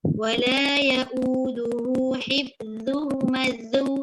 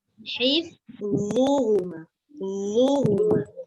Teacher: Sambil hujung lidah kita keluar kat depan, sambil pangkal lidah dengan tengah lidah belakang angkat. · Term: tebal